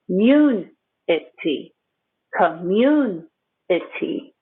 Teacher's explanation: The stress is on mun.